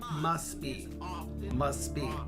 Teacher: The T sound in must is often dropped. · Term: Dropping sounds